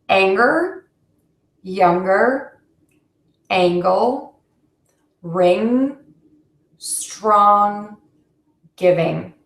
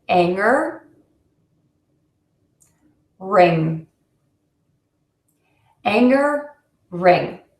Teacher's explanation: So you're going to, again, keep your tongue behind your bottom front teeth and keep the air moving out of your nose